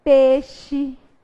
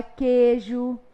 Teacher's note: O que era ditongo, a gente transforma em monotongo. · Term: monotongação